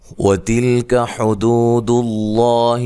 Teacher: لفظ اللہ کے لام کو موٹا پڑھیں گے، اس سے پہلے حرف پر پیش ہے